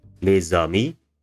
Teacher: But when you use when you say the and a thing that has a vowel at the beginning of it, the z reappears, and this becomes les amis.